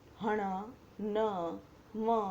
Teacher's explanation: જે વ્યંજનો પોતાના સ્થાન ઉપરાંત નાકમાંથી બોલાય તેને અનુનાસિક વ્યંજન કહેવાય છે